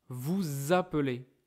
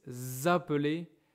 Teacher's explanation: Then we make a link between them, like here, vous appelez, okay. And the S will sound like Z